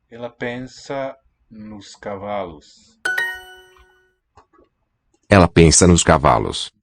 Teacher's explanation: This NOS has a light, is tonically light, no stress on it, and so the vowel raises